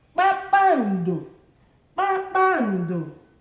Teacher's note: High, high, low, low.